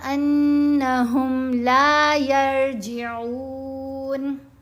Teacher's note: نون کو ساکن کر دینا ہے وقف کرنے کی صورت میں